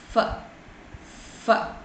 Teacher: your mouth is being narrowed, and the sound while it comes through, the air will comes to the outer atmosphere, it produces with a lot of friction